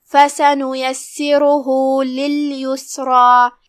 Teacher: रा पे पेश है तो यहाँ रा का हुक्म है तफ़ख़ीम, लिहाजा उसका ध्यान रहे भारी आवाज़ में उसे अदा करना है। आखिरी में हाँ है और उस पे ये अलामा का मतलब है मद सिला सुग़रा, लिहाजा 2 मद के बराबर हमें अपनी आवाज़ खींचना है।